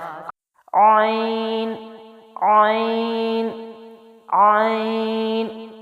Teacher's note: زبان پیچھے حلق کی طرف مضبوطی سے لے جاتے ہوئے باریک آواز کے ساتھ